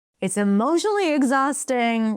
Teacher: When you lift your pitch, you're stressing that word emotionally.